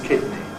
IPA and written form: ˈkɪdni (kidney)